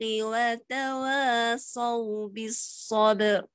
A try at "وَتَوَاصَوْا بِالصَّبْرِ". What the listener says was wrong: Bukan sabar. Jadi ba, lepas. Lalu je atas ba. As-sabr. Sabr. Dia gini, apabila dua sukun, satu sukun arid, satu sukun asli. Dia pertemuan dua sukun sini kita berhenti ni, dia hak belakang sekali dia hanya tinggal sebahagian. Tinggal 1/3 lah.